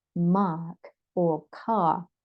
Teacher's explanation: they prolong the vowel but they don't pronounce the r